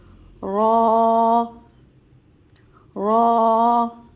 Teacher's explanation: जब र को हम अदा करेंगे तो थोड़ी सी हमारी जबान लड़खड़ा आएगी और इसे मोटा पढ़ेंगे · جب را کو ہم ادا کریں گے تو تھوڑی سی ہماری زبان لڑکھڑائے گی اور اسے موٹا پڑھیں گے.